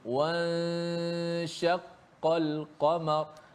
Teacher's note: Dipanjangkan ghunah pada ikhfa. Nun bertemu dengan huruf syin.